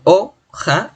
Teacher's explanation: la mayor fuerza de voz está en o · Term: acento